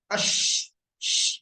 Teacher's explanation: Huruf shin ini tengah lidahnya dia naik ke atas. Ash, berarti dia akan ketahan ke atas.